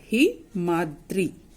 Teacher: हिम plus अद्री, अ और इसके अंतिम स्वर को जब हम मिलाएंगे तो अ और अ मिलकर आ बन जाएंगे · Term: दीर्घ स्वर आ